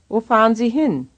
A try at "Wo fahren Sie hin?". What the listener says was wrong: Wo fahren Sie hin? You have to go up at the end. Wo fahren Sie hin? Wo fahren Sie hin? Wo fahren Sie hin? Wo fahren Sie hin?